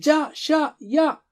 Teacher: زباں کے بیچ سے ہیں جا شا یا